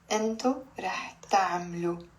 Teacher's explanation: We're changing the kasra under the meme into a sukun because we're adding a suffix in the end, the O sound.